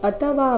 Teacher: ಅಥವಾ ಇಲ್ಲಿ ಥ ಮಹಾಪ್ರಾಣ ರಸ್ವ